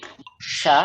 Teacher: dia ada di was lisan di tengah lidah dinaikkan ke langit-langit bagian atas dinaikkan ke langit-langit bagian atas tapi diberikan rongga sedikit ya lihat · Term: huruf syin